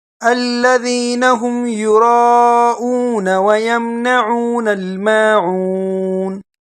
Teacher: نون کو الف نہیں دینا بلکہ نون کو ڈائریکٹ پڑھنا ہے اور جلدی میں پڑھنا ہے